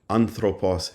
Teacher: The third syllable from the end ἄνθρωπος has the accent